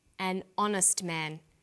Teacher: The H is not pronounced, so honest sounds like it starts with a vowel.